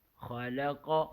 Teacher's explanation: اب قاف کو اور خا کو موٹا پڑھیں گے اور لام کو باریک پڑھیں گے